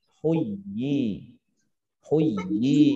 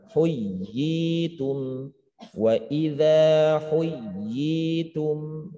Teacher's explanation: Ditegaskan, dikokohkan bacaannya tetap dengan dua harokat. Tapi jangan sampai ya-nya itu yang bertasydid juga terabaikan. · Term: tamkinnya